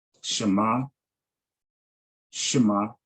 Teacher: The Shiva at the beginning of a Hebrew word is always vocal or pronounced with the short slurred sound. The E as in stupefy.